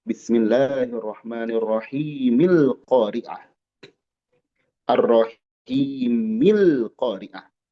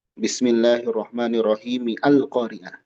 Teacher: jadi a-nya hilang kalau disambung dengan sebelumnya itu namanya hamzah wasal